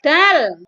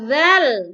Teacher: Kalau huruf dal dibaca tebal, kalau huruf zal dibaca tipis.